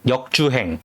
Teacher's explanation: Ends on 'ng', like 'sing' from the back of the throat, don't add a hard 'g'.